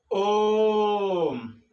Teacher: हरस स्वर से प्लुप्त स्वर को 3 गुना अधिक समय लगता है बोलने में